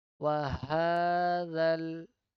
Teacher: We need to just directly join zal with the lam.